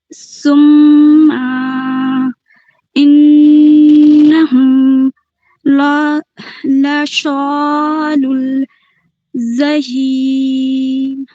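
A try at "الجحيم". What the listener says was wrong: اور جیم، جہیم ہے نا، جیم اس میں اچھے سے ادا کیجیے، جہیم۔ اور ہا کو بھی جہیم۔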